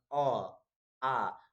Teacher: ये स्वर वर्ण के उच्चारण में मैक्सिमम, अधिकतम कंठ तालु का उपयोग होता है, जीभ ओठ का नहीं होता। ठीक है? जीभ ओठ का नहीं होता है।